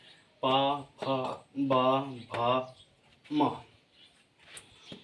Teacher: आपके होठ दोनों होठ आपस में स्पर्श होते हैं इसलिए इनको ओट ध्वनि कहते हैं